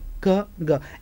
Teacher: The air is blocked at the back of the mouth with the contact of back of the tongue and soft palate. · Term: velar sound